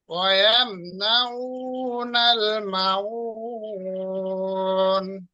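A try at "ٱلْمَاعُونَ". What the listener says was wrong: মাউন নয়, মা টান দেন, মাউন।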